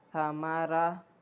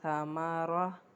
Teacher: پڑھنا اس طریقے سے کہ ہمارے ہونٹ بھی گول نہ ہوں اور آواز بھی ہماری پر کی آئے، ٹھیک ہے۔ اس کی مشق تھوڑی کرنی پڑتی ہے، لیکن آہستہ آہستہ کرنے سے پھر بالکل ٹھیک ہو جاتا ہے۔